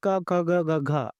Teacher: क को अगर आप बोलेंगे क ख ग घ आपका कंठ हिलेगा इस्तेमाल होगा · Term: कंठ व्यंजन